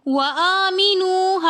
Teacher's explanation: ہم نے واو مدہ ہونے کی وجہ سے اس کو ایک الف کی مقدار کھینچ کر پڑھا